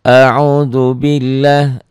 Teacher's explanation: lafaz Allah ini dibacanya tipis. Bunyi A ya, jangan bunyi O tapi bunyi A. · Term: tarkik